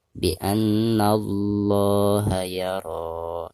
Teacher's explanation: Lam jalalah sekaligus sebelum lam jalalah tersebut ada huruf yang berharkat fathah, maka cara membaca lam jalalahnya itu harus ditebalkan